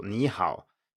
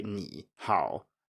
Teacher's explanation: You have to go up on the first syllable, you cannot say ni hao, or you can but nobody else does, so it would be considered wrong.